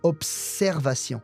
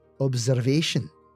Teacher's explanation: The S after the B is a strong S. Observation. Whereas in English, the S sounds like a Z.